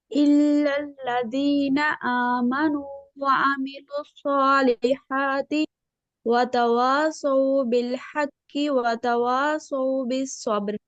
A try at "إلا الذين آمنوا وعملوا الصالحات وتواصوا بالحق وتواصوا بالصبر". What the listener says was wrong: फतवासौ, होंठों को बिल्कुल गोल कीजिए।